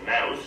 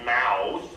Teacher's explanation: the idea is that canadians have a tendency to raise their tongues in their mouths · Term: canadian raising